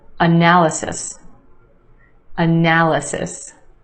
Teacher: four syllables in this word with emphasis on the second syllable